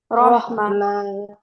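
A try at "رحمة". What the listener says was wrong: রহমা। রহমা। টান হবে না টান হবে না কোনো। রহমা।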